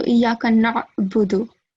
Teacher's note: So, first of all, in the 5th verse, Iyaka na'budu, this letter, Ain, It's a thick letter, so it should come from the throat